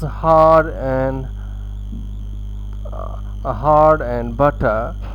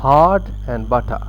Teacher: in non-rhotic varieties, speakers no longer pronounce ra in post-vocalic environments. That is, it means that when it is immediately after a vowel and not followed by another vowel, so it is not pronounced. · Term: non-rhotic English